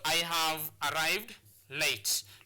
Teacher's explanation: the words that need to be stressed in this sentence will be arrived and late